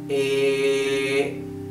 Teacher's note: not a it's not a it's not it's flat okay a it's flat there is no variation of the tone right it's one to one sound